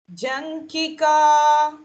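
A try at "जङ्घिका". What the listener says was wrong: Not junkie, it is Janghika. First, ghee. It is as we say ghee, no? The edible ghee, that ghee. Then it is ka.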